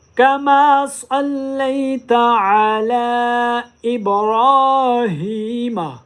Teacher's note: لام کے اوپر چھوٹی مادہ ہے، اس لیے اس کو 3 الف کی مقدار لمبا کیا جائے گا۔